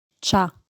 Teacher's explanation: the final vowel is reduced to the point that it's dropped